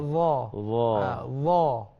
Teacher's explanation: huruf Dha ni dia tidak ada tak ada desiran angin, desiran suara, tak ada